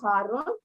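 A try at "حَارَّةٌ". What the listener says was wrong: Haratun. Time marbuta at the end.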